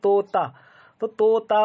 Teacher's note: आपकी जो जबान है ये कहाँ लगेगी? दांत के ऊपर लगेगी